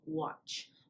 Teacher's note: it ends in a voiceless consonant sound ch so it takes the t verb ending next we have respected